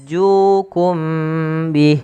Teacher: ju panjangkan dua harakat karena ia mad tabi'i